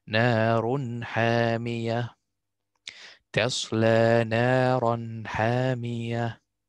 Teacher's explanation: complete showing of the stable noon or the tanween. Here, tanween, ha.